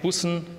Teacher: Da hätten wir hier ein ungespanntes U, das wäre kurz. Die Silbe wäre sonst überleicht.